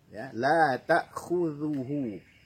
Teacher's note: ujung lidah kita berada di antara gigi muka atas dan gigi muka bawah. Keluarkan sedikit ujung lidah kita melewati batas gigi. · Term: huruf zal